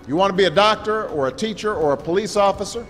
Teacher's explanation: semuanya dibaca bunyi R-nya murni seperti teman-teman menggunakan R dalam bahasa Indonesia, cuma bedanya dia tidak bergetar dalam American accent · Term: American R sound